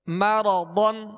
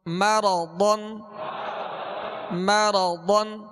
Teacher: پڑھیں گے اور ضاد کو پر اس لیے پڑھیں گے کہ حروف مستعلیہ میں سے ضاد کو پر پڑھیں گے یعنی موٹا پڑھیں گے